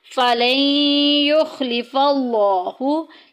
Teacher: لفظ اللہ کا لام ہم یہاں پر موٹا پڑھیں گے کیونکہ پیچھے زبر آ گئی